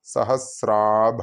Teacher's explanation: സഹസ്ര plus ആഭ, സഹസ്രാഭ എന്ന് തന്നെ ചൊല്ലണം, നീട്ടേണ്ടതാണ്